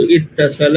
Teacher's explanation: اور جو افتعال میں جو الف اور تا لے کے آتے ہیں تیسرے نمبر پہ تا کو، تو یہ دونوں تا کو تشدید سے مدغم کر دیا گیا تو اتصل ہو گیا